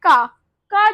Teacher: जब बोले ना तो हमारी जो आवाज है वो गले से आ रही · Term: कंठ ध्वनि